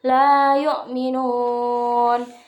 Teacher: hukum bacaan mad arid lisukun yang dibaca panjangnya 2 hingga 6 harokat